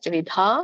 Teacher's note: ತ್ರಿವಿಧ ದೊಡ್ಡ ಧ ಇದೆ ಮಹಾಪ್ರಾಣ ಇದೆ